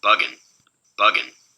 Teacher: Much less clear stop character here, right? So it doesn't get as quiet. The burst is not as sharp. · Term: lenition